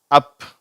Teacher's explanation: இந்த அ சவுண்ட் வந்து கொஞ்சம் அழுத்தமானது ஆனா குறில் ஓசைதான் ஷார்ட் வவல் தான்